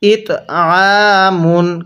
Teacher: ইতমুন হ্যাঁ কিভাবে পড়বো ইতমুন আরেকবার আমার সাথে পড়ুন ইতমুন কারণ আইনটা চাপ দিয়ে পড়লে আইনটা সহি শুদ্ধ উচ্চারণ হবে এছাড়া আইনটা সহি শুদ্ধ উচ্চারণ হবে না সেটা হামজা উচ্চারণ হয়ে যাবে